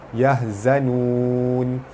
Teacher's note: Yahzanun pada depan bertemu waw mad asli. Mad asli bertemu huruf yang dimati kerana waqaf, hukumnya mad arid disukun dibaca panjang 6 atau 4 atau 2 harakat